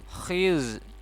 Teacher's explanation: Dzalikal khiz. Kha, ini huruf kha bukan ha ya. Ada titiknya, maka dia seperti ngorok ya. Khiz, huruf za.